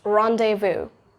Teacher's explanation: So it's rendezvous, not rendezvous or like zzz. No, don't do that zzz sound at last. It's just rendezvous.